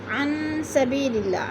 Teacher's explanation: سبی میں یا مدہ. اللہ باریک پڑھا جائے گا کیونکہ اللہ سے پہلے لفظ لام کے نیچے زیر ہے · عن نون ساکن کے بعد سین آ گیا ہے تو ادھر اخفا ہو رہا ہے